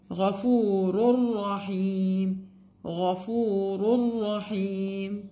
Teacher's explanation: We remove here the نون of تنوين.